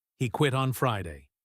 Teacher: He puts the stress on Friday because that is the new information.